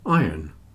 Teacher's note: you can't really hear the r in iron and ironing